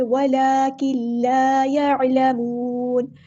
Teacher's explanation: یہاں پر جو نون کی آواز ہے وہ لام میں مکمل مکس ہو جائے گی، آواز ظاہر نہیں ہوگی کیونکہ یہاں پہ ادغام کامل ہو رہا ہے، ادغام بلا گناہ